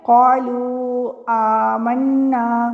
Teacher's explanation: تو اس کا مطلب یہ ہوا کہ واو مدہ کے بعد جب حمزہ آ رہا ہے تو یہاں پہ بھی مد پائی جا رہی ہے